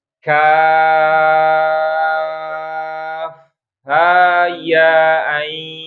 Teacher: kaf bacanya jangan langsung kaf tapi kaf panjangin dulu baru belakangnya